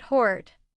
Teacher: British English tends to round the vowels more. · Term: Vowel sounds